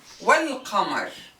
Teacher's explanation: here we will not pronounce the alif, the hamza of the definite article. We will jump right to the lam. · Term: joining hamza